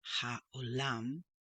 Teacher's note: I have a habit of pronouncing this as ch, when it's really ha, like in the word hope. If it's closed in, then you have that ch sound.